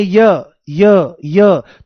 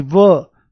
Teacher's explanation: यहां पर मूल बात क्या है कि य का उच्चारण करते समय इ की आवाज और व का उच्चारण करते समय उ की आवाज आती है।